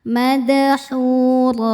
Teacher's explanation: Huruf ro dibaca secara tafkhim karena barisnya fathah tanwin. Maka ro ditebalkan. Kemudian ro jika berhenti hukumnya mad iwad.